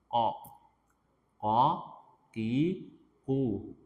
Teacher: Aqsal lisan itu mana? Lidah yang paling dalam.